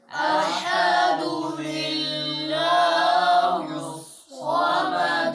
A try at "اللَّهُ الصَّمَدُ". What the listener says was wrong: تم موٹا کیوں کہہ رہے ہو؟ چلو اب دونوں آیتیں قل هو اللہ احد اللہ الصمد الصمد قل هو اللہ احد اللہ الصمد.